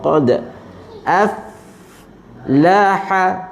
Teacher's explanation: Pertama pada huruf qaf ya bunyi qa ya, kemudian pada dal ada detakan kecil qalqalah sughra